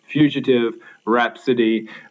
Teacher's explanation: um uh they're very unstressed there's not much to them and rhapsody that strong beginning of the word is clearly stressed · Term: dactylic